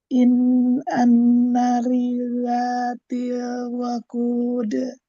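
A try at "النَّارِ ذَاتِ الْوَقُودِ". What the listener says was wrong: Dipanjangkan anna tabi'i, 2 harokat. An-nari dzatil waqud.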